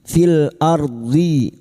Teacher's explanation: ra sukun yang didahului fathah kita baca tafkim